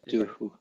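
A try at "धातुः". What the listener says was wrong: Dhatuhu. Yeah, don't forget the aspiration. Dhatuhu.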